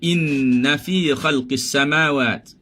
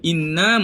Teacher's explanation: Semua duduk dalam khayshum. Sebab tu kita kata dengung itu betul-betul pekat. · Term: dengung penuh